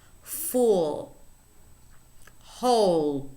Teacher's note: the tongue is no longer placed at the alveolar Ridge this is a dark L